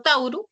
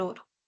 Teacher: Este proceso se le conoce como monoptongación. O sea, dos vocales, un diptongo se reduce a una sola.